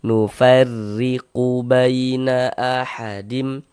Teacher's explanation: Maka huruf ro itu dibaca tipis. Baca tarkik. Nah, tipiskan huruf rnya.